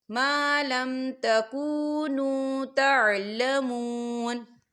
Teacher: وَيُعَلِّمُكُم مَّا لَمْ تَكُونُوا تَعْلَمُونَ، تعلمون، یا دیکھیں مون، واو ساکن ہے، واو ساکن سے پہلے پیش ہے تو یہاں پر واو مدہ ہو رہا ہے تو ہم اسے 2 حرکت کے برابر کھینچیں گے